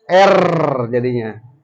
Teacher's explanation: Ro itu adalah l yang diulang sehingga bergetar